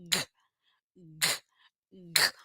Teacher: Explode o ar, sonzinho curto e faz a força no pescoço. G, g. Sai pouco vento. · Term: velar